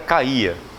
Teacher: Na palavra caía não há semivogais. O A é vogal, o I é vogal e o A também é vogal.